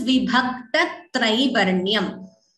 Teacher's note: So here there is a dvitvam. After vibhakta, an extra t is heard.